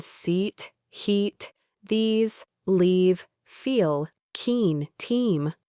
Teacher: Your tongue is high and pushed forward towards the front of your mouth, almost touching your top side teeth. It's a longer, stretched, and brighter sound. Your face muscles should feel a little more engaged, like you're stretching your mouth. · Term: long E sound